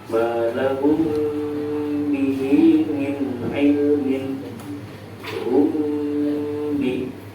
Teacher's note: Mimnya dipanjangkan 2 sampai 3 harokat